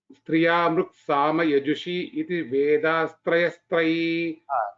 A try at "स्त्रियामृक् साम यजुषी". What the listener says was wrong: स्त्रियाम् इति वदनानन्तरं मृक् इति मास्तु स्त्रियां ऋक् साम यजुषी अथवा स्त्रियामृक् तत्र आहत्य तत्र collectively if you tell it is स्त्रियामृक् otherwise if you tell स्त्रियाम् it is ऋक् साम